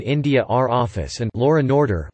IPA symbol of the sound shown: r